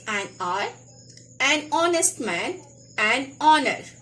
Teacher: that H is silent, so when the words are spoken, the opening sound is that of a vowel